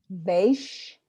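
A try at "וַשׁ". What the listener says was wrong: Give me the right vowel again. So you're getting the consonants right, but you're just not getting the vowel.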